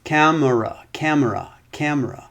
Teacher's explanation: in a word is sometimes so unstressed the pronunciation is so small that it can disappear